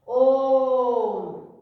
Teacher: जैसे भाई ओम शब्द है अपना, ओम क्या है, ओम शब्द है, जो ये अश टाइप में है, संस्कृत में इसका ए उच्चारण ध्वनि है भाई, ठीक है। ओम, तो ओम शब्द का उच्चारण हम सही मायने में करें तो ओ को 3 गुना ज्यादा साउंड तक बोलना है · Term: पलुत स्वर